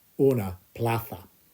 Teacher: that Z makes a th sound